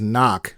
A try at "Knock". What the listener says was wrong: It's not Knock, it's Canuck. They make a point of pronouncing that, hitting that hard K.